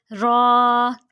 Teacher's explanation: زبان کا کنارہ اور دانتوں کی جڑ کے اوپر تالو کی جانب والے حصے سے ادا ہوتے ہیں یہ